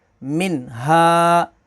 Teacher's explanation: अब यहाँ पर भी ये नून साकिन है और उसके बाद हा है, हा हरूफ़ हलकी है तो यहाँ पर इज़हार होगा।